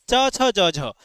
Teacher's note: तो ये जो च है प्यारे बच्चों ये आपका निकलता है तालु से। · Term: च वर्ग